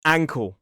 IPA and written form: ˈæŋkəl (ankle)